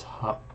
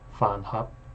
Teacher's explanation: here it's hup with a low tone. but I guess when you say fan hap, it rises.